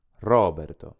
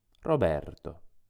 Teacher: Seguiamo allora la regola generale, per cui le parole italiane sono principalmente piane, cioè accentate sulla penultima sillaba. La sillaba che va pronunciata più forte delle altre è ber. Quindi il mio nome si legge, si pronuncia Roberto.